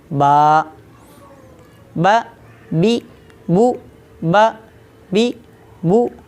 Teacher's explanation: با ہونٹوں کی تری اس طرح کہ اندر سے ہونٹ تر ہیں، نچلا ہونٹ بھی اور اوپر والا ہونٹ بھی تر ہے، تو یہ جو تری آپس میں ملے گی تو با ادا ہوگا